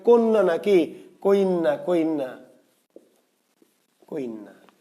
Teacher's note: শেষের ব্যঞ্জনটা যদি যুক্ত ব্যঞ্জন হয়, অন্ত ব্যঞ্জনটা, এবং তার আগে যদি ই বাড়ে, সেই ক্ষেত্রে এটাকে স্বরগম না বলে বলতে হবে অপিনিহিতি